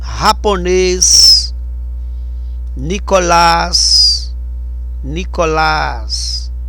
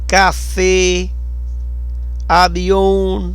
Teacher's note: a gente vê aí que a sílaba tônica é a última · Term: aguda